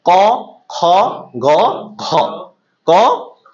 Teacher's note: এই চারটা কিন্তু কণ্ঠ থেকে ডিরেক্ট আসতেছে, ক খ গ ঘ। ক উচ্চারণ করেন একদম কিন্তু কণ্ঠের সাথে সম্পৃক্ত। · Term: কণ্ঠ ধ্বনি, কণ্ঠধ্বনি